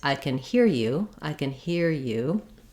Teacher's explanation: with the yeah Glide letter Y or the ya sound so we're looking at the linking between ER and ya